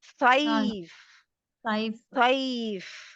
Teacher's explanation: فا ہمس سے ہے تو جب اس کے اوپر رکیں گے تو کیا ہوگا؟ اس کی ہوا باہر آ رہی ہوگی